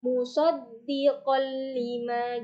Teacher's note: Secara bahasa idgham bilaunah artinya memasukkan huruf dengan tanpa dengung. Jadi memasukkan suara nun, sukun, atau tanwin ke huruf yang dua ini, huruf lam dan ro, dengan tanpa mendengung. Seperti contoh, musaddiqol lima, jadi tidak panjang, tapi memasukkan tanwin ke huruf lam.